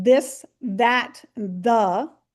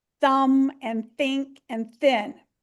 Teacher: It has the voiced sound like in this, that, and the. And it has the unvoiced sound like thumb and think and thin.